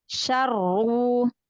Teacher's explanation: Roknya udah langsung tafkhim, ya. Sukunnya itu udah langsung tafkhim.